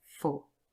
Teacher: Now, for officially has a long o, but usually this is not a stressed word, and so in its weak form it would be represented by schwa